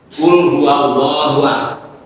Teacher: Wahnya itu dibaca panjang dua harakat, tidak boleh lebih, tidak boleh kurang. Maka namanya mad thobi'i.